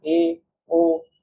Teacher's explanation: ये ऐसे स्वर होते हैं जिनको बोलने में हमारा जो मुख होता है वो आधा खुलता है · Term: अर्ध विवृत स्वर